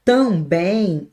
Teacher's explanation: Também, o acento está na última